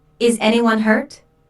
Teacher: this is a yes slash no question so the intonation Rises at the end